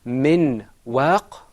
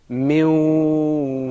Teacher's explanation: go you see that second time you didn't hear the noon the noon wasn't completely articulated